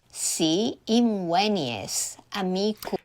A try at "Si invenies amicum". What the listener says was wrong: Her S is frontal. It should be retracted.